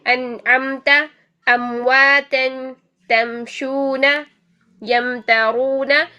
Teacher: ٹھیک ہے، میم ساکن کے بعد با اور میم کے علاوہ کوئی بھی حرف آ جائے میم کا اظہار ہوگا. میم کو 1 حرکت میں آپ نے پڑھنا ہے، 1 سیکنڈ میں آپ نے پڑھنا ہے، اس پر رکنا نہیں ہے، غنہ نہیں کرنا ہے